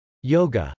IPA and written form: jˈoʊgə (yoga)